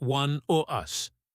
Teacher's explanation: The vowel sound shortens, but sometimes in phrases like one of us, it sounds like one o' us. The of becomes weak, and us connects to it.